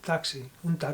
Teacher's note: En español la letra X, la llamamos X, is not as strong as in English. Nosotros es difícil que digamos taxi, decimos más bien un taxi, casi como una S.